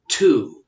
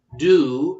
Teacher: when you say to with a T sound as opposed to do, there's a little extra burst of air there that comes off of the T, even though the tongue is touching in a very similar place in the roof of the mouth as when we say do.